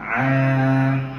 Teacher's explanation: kalau huruf Ain tengah-tengah a a kita akan rasa getaran dia